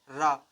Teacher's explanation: यह हमारा लुंठित व्यंजन होता है। रा का उच्चारण करते समय हमारी जीभ दांत के ऊपरी भाग तालु को स्पर्श करती है